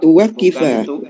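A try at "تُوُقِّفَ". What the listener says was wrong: bukan tuwak. Bunyi domah. Tuwkifa. Tuwkifa.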